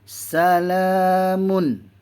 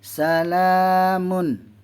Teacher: Izhar halki. Tak boleh dengung. Mun. Jelas. Terang.